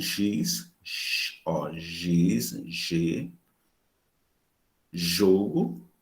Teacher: Qual articulador ativo? A língua. O articulador passivo, palato duro. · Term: fricativa G